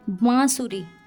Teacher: उसमें नाक और मुंह दोनों से साउंड निकलती है, तो इसलिए यहाँ अनुनासिक आएगा, यानी चंद्रबिंदु।